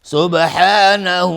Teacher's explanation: سبحانه با قلقله میخواد. های ضمیر مد صله صغراست.